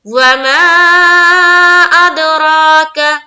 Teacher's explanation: را کو پر رکھیں گے، را کے اوپر کھڑا زبر ہے اور ایک الف کے باقدر کھینچنا ہے